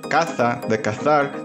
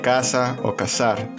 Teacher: se distingue el sonido de la Z de la S